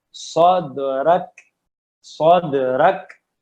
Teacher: ذرا فرق کریں، اور بہت اہم ہے، قلقلہ اور ہمس کو مکس نہیں کرنا. صاد صاد دال پہ قلقلہ ہے، اور رک اس پہ ہمس ہے. ٹھیک ہے جی، اس کو رک ایسا نہیں بولنا، ورنہ تو یہ قلقلہ بن جائے گا، ہمس نہیں رہے گا.